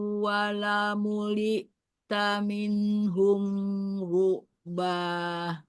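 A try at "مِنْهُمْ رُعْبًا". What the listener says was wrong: Di minhum ru'banya nggak sama dengan yang tadi minhum firoro, harusnya sama. Minhum ru'ba. Jadi jangan ditahan, tapi dialirkan.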